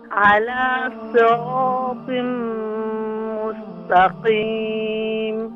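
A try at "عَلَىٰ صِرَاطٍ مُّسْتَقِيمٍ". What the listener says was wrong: हाँ, यहाँ सीन को क्लियर करें और इसके बाद ता को भी क्लियर करें। मुस्तकीम।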